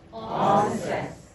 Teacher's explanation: When you say onset in English, there's a little glottal stop, right?